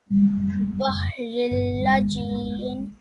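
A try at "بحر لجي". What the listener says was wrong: Okay, Bahriluj. There is a dhamma on top of the lam, so Bahrilujiyan. Remember, when there is a shadda, we also have to press each sound, okay?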